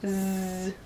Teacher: So for example, the Z sound is Z. So if you put your hand over your throat when you say Z, you can feel your throat vibrating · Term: voiced